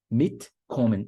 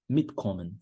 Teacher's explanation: A sílaba tônica fica em cima de mit, porque mit é um prefixo separável.